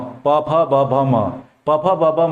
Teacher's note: प फ ब भ म और उ, ये सभी उच्चारण इनका होता है ओष्ठ से